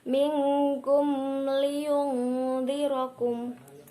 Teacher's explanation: Mim sukun bertemu dengan huruf selain mim dan ba, yaitu huruf lam, dibaca idhar syafawi, jelas dan terang